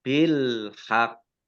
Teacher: Alif lam di sini ya, ada alif lam komariah, ditandai lamnya dibaca sukun. Nah, kemudian di sini qafnya ada tasdidnya, maka dibaca double. Kemudian qaf berikutnya sukun ya, karena waqaf, maka dikolkolahkan.